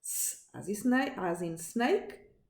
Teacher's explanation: And they only differ on the use of vocal folds. So, s is a voiceless sound, it doesn't use the vocal folds